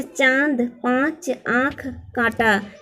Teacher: जो अ के ऊपर चंद्र बिंदु लगा हुआ है इसे अनुनासिक कहते हैं। इसका उच्चारण नाक और गले से दोनों से होता है।